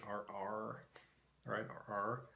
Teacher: Faroese has a flap R, like American English